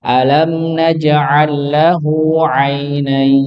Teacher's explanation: Ainain dibaca dua, empat atau enam harokat boleh.